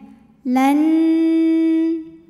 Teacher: Maka nun pertama dileburkan ke nun kedua disertai bunyi dengung n. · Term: idgham bil gunnah